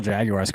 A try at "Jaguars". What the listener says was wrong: just pronounce the hard U in Jaguar?